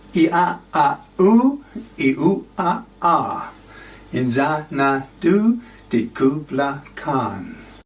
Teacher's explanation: Zan is balanced by Khan, and the alliterative d and k sounds, the assonance of I in and did, and a and u in Xanadu and Kubla Khan